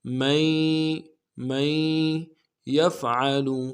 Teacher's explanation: نون نہیں پڑھیں گے، من ہے اصل میں لیکن نون نہیں پڑھیں گے، یا کے ساتھ ملانا ہے